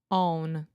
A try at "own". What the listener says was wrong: So think this is a moving vowel where we say oh, ooh, ooh. So say oon. And now put an O at the front. Own. So you were trying to close your mouth and say the on before you made the moving vowel. So when you're making the N sound, your mouth is already in the oo position. So when you say home, it's like you're about to kiss somebody, preferably